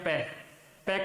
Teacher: ऊपर और नीचे के दोनों होठ हैं वो स्पर्श करते हैं